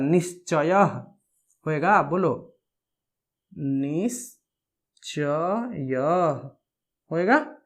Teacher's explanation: यदि विसर्ग के बाद में च हो या छ हो तो क्या हो जा रहा था, आधा तालव्य श का आगमन हो जा रहा था।